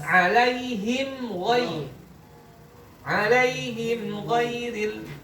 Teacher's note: Mana mim sukunnya? Him. Ketemunya dengan huruf ghain. Maka ini masuk idhar syafawi. Maka mimnya dibaca jelas.